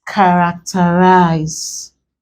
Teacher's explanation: Normally, we are supposed to stress this here because this is the anti-penultimate syllable, but characterize is stressed on the first syllable. This word is an exception to this generalization.